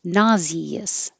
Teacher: three syllables nauseous and then the s in the middle is a z